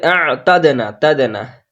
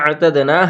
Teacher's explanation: তা এর পরে দাল আছে, এটা কলকলা আছে, তাহলে হবে আ'তাদনা, হামজার সাথে আইনের সুন্দর করে উচ্চারণ করতে হবে।